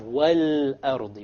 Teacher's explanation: The first of our lunar letters is a hamza. Okay, so we have wal-ardi. We pronounce the lam.